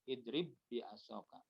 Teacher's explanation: Nah, itu ba bertemu ba itu dua huruf yang sama, satu makhluk satu sifat, dan yang pertama sukun, yang kedua berharokat, maka ini diidghamkan, dimasukkan, jadi seperti hanya satu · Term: idgham mutamasilain kamil